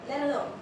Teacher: since the Americans' accent is more flowy, it's more smoother, so there's an elision in let, so it will be let alone.